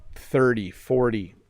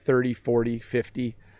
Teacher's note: the t sounds more like a d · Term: flap t